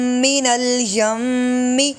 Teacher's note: غنہ تھا میم مشدد کی وجہ سے